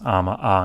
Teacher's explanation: Ama e might appear ama a. So vowel harmony between these vowels, ama a instead of ama e.